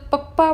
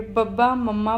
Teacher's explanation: ਜਦੋਂ ਪੱਪਾ ਬੋਲੋਗੇ, ਫੱਫਾ ਬੋਲੋਗੇ, ਬੱਬਾ, ਮੰਮਾ ਬੋਲੋਗੇ ਤਾਂ ਦੋਨੇ ਹੋਠ ਜਿਹੜੇ ਆ ਸੁਹਾ ਕੇ ਇਹ ਵਿਅੰਜਨ ਬੋਲੇ ਜਾਂਦੇ ਆ